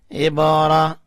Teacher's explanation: با کے اوپر کلکلا کیا یعنی با کو اٹھایا